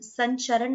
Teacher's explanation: न का प्रोनाउंस हो रहा है न हलंत के साथ में आ रहा है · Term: अनुस्वार